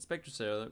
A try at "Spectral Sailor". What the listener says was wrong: Inspector Sailor. Yeah, but it sounded like you said Inspector.